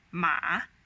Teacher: if you pronounce it as a third tone ma it means horse